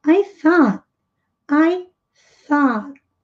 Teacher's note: TH com som de S com a pontinha da língua presa entre os dentes. O aberto. Ignora completamente as letras U, G, H, que não vão ter som nenhum aqui.